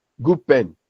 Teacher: So you realize that the alveolar sound d changes to the bilabial sound b.